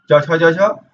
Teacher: इसका उच्चारण तालव्य से होता है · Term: च वर्ग